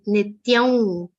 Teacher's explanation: That's why here, according to the rules that we have learned in version 6 grammar rules, the anuswar will be pronounced like a nasal V consonant